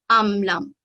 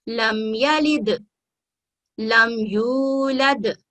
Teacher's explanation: میم ساکن ہے اور اس کے بعد اگر یہاں پر با اور میم نہیں ہے تو ہم میم کو کلیئر پڑھیں گے اور یہاں پر غنہ نہیں کریں گے